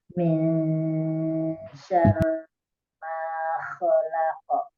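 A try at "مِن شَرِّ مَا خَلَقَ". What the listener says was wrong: Tajwidnya sudah lumayan baik ya. Hanya suaranya tuh kurang apa ya? Kurang natural. Sebenarnya sudah ada powernya, tapi powernya disimpan ke dalam, jadi kayak tenaga dalam gitu. Jadi pakai tenaga dalam, suaranya itu mengalirnya ke dada gitu, bukan dialirkan di rongga mulut. Syarri kan kayak gitu ya.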